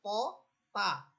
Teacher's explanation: জিহ্বার আগা সামনের উপরের দুই দাঁতের গোড়ার সাথে লেগে এই দুইটা হরফ উচ্চারিত হচ্ছে। এরপরে সিফাতগত পার্থক্য হচ্ছে এই দুটো হরফ শক্ত হরফ, এটা তো একই, কোনো পার্থক্য না। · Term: মাখরাজ